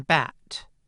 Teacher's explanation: in the low front part of the vowel space, there was only one vowel: [æ] as in bat